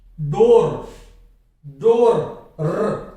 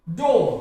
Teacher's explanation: जैसे DOOR को लीजिए आप, डोर, डोर, नहीं, डो, इसका सही उच्चारण क्या है, इस तरह से, डो। अंत में आर आया हुआ है, आर का उच्चारण होगा ही नहीं। कोई सा भी शब्द हो इंग्लिश का जिसके अंत में आर आ जाएगा, उस आर का उच्चारण नहीं होगा।